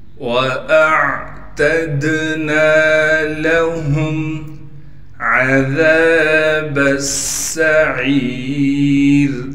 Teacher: تشدید ہونے کی وجہ سے تھوڑا ٹھہراؤ کریں گے اور سین میں سیٹی نکالیں گے۔